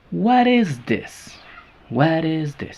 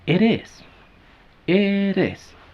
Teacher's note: porque si juntamos las dos palabras, se queda la T en medio de vocales. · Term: flap